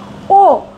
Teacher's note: ঠোঁটটা কুঞ্চিত হয়ে পেছনের দিকে চলে যাচ্ছে।